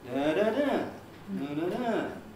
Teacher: On the last syllable, the pitch goes up high and comes down again. That's what's telling us that the last syllable is strongly stressed compared with the weaker one at the beginning.